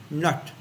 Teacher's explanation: Nobody says na in English. So pronounced nut, with the tongue curled up against the roof of the mouth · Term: Indian N